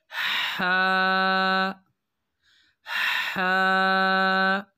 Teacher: ہا اینڈ ہا، ہا ساؤنڈ از ریبنگ، ہا کی جو آواز ہے یہ حلق سے رگڑ کھا کر نکلتی ہے